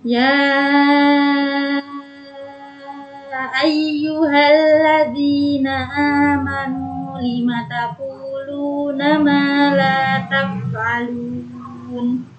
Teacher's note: Ma la itu ada panjang 2 harokat semua, ma panjang dan la panjang.